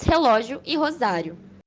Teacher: o autor cria um jogo de sons vocálicos abertos, com os sons A e O, que se encontram na segunda sílaba de ambas palavras, relógio e rosário